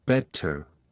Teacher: unlike American English the t is pronounced crisply in British accents better is pronounced with a clear T like better round your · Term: t sound